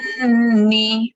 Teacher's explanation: Jun tu lepas 6 harakat kena tambah en sikit dengung.